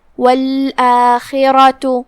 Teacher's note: کلمت والآخرہ یہاں خا ہے، خا کی ادائیگی حلق کے اوپر والے حصے سے ہے، خا حروف تفخیم میں سے بھی ہے تو ہم اسے بھاری آواز میں پڑھیں گے